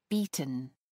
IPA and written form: ˈbiːtən (beaten)